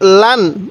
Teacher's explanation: আমি কিন্তু এই তানবিনের মধ্যে কোন টান দিতেছি না